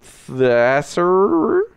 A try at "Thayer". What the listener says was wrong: I think the S is silent, so we're going to go